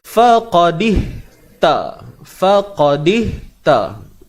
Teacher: Huruf fa pada atas fa, huruf qa pada atas qa, tebal selamanya. Ingat, huruf qaf walaupun 1 harakat, sifat tebal tu kena jaga baik-baik, molek-molek.